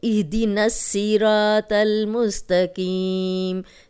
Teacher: صاد کو موٹا پڑھیں گے، را کو موٹا پڑھیں گے، تو کو موٹا پڑھیں گے اور قاف کو موٹا پڑھنے کی پریکٹس کریں گے تو یہ خود ہی پوری آیت درست ہو جائے گی۔